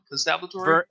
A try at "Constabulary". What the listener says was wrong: No, there's no T. There's no second T, rather.